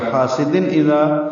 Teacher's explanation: حمزہ ہا عین خا غین خا 6 حروف اظہار یا حروف حلقی میں سے ہیں, اس لیے اظہار ہوگا. حاسدن تنوین کے جو نون ساکن ہوتا ہے تنوین کے اندر وہ ظاہر کر کے پڑھیں گے